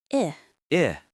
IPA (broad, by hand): ɪ